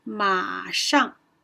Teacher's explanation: when the third tone is followed by another syllable, it does not rise.